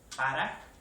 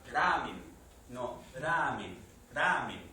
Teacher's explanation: cuando decimos ra, es más cercano a la zona alveolar. Aquí es más cercano a la postalveolar. Aquí atrás, ramen.